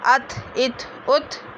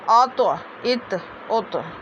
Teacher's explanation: ता पतला होता है और तो पुर होता है। ता को हम नरमी के साथ अदा कर देंगे, अत इत उत, और तो को पुर होके।